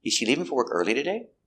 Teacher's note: the stress goes up at the end because it's a yes or no question